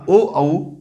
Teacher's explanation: कंठ और ओठ के जो मिश्रित भाग से व्यंजन उच्चारित होते हैं वो ओ है और औ है। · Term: कंठ ओष्ठ